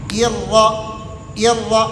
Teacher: را شروع سے موٹی ہے، حمزہ باریک ہے